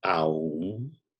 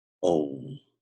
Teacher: In Sanskrit, the ah and the oo, when it's produced together, are pronounced o. So never pronounce om as aum.